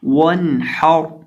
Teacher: اور آخر پہ را ہے تو را ساکن سے پہلے زبر ہے تو اس کو پر کریں گے